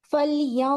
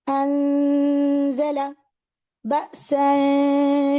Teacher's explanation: गुन्ना की आवाज जो नाक में जा रही है वो हैवी है, मैं मुंह को भर के पढ़ रही हूँ